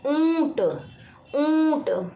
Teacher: मुंह और नाक दोनों का प्रयोग किया जा रहा है ऊंट बोलने में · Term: अनुनासिक